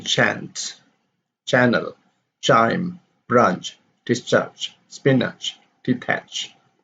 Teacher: the consonant cha is produced by raising the tongue towards the palate to close the air passage and opening it less suddenly · movement of the tongue going back going down is less suddenly the movement of the tongue is followed by the rounding of the lips but without the vibration of the vocal cords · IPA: tʃ